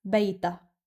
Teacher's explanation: In certain Arab regions, it's pronounced as Bayt-ha, but in Lebanon, it's pronounced as Bayta, as if the Ha-sound is omitted